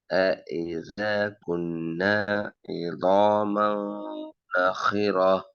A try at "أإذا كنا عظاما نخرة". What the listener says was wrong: إذا كنا عظاما இந்த இதாவையும் இந்த நாவையும் ஒரே அளவுக்கு கொஞ்சம் நீட்டுக்கோ. மீம எந்த காரணம் கொண்டும் மா அல்ல ம ம நூன ந இந்த சவுண்டு மாத்த வேணாம். عظاما نخرا ن